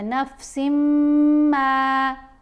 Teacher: یہاں سین کو میم سے ملاتے ہوئے بھی غنہ ہوگا۔ نفس ما، میم کو لمبا کیا کیونکہ زبر کے ساتھ الف ہے